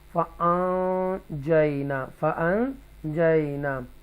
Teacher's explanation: نون ساکنہ ہے، اس کے بعد جیم ہے، یہاں گنہ کریں گے فَأَنْجَيْنَا فَأَنْجَيْنَا، اور یہاں پر ایک فا ہوگا، رائٹ.